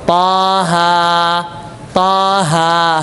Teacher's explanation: dia enggak terlalu panjang cuma dua harakat dan juga tidak pendek